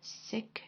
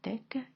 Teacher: when the speaker said sick instead of thick, and that was an example of alveolar assimilation